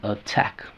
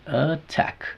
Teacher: Tack. Entonces, la T está en la sílaba tónica, no podemos hacerlo flap. Tiene que sonar original.